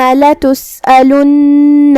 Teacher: کلمت لتسألن یہاں لام پہ پیش ہے تو اس کا دھیان رہے. نون پہ تشدید ہے, ہمیں 2 حرف کے برابر نون کو ادا کرنا ہے.